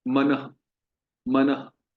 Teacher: तो विसर्ग में जो उससे पहले जो स्वर वर्ण होता है, उसी की ध्वनि इको होती है